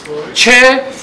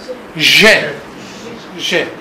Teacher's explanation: there is mixing between stop and friction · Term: Stop consonant with special kind